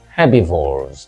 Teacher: In herbivores, the stress is on the first syllable, by the way, but in herbivorous, as you can see, it is on the second syllable.